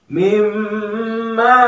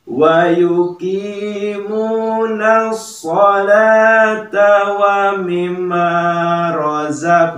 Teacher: Jadi usahakan ada haknya sebanyak 2 harokat untuk gunnah